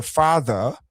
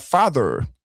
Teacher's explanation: en anglais britannique, on ne prononce pas le R, surtout à la fin des mots, il est muet